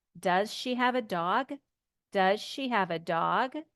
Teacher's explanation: when we ask this question we're going to ask the question and our voice will go up